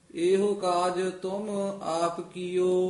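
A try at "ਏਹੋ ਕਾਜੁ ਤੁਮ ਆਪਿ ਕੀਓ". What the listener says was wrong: एहो नहीं कहना एहो ईड़ी लां वधा देनी है हाहे अंकड़ एहो काज तुम आप कियो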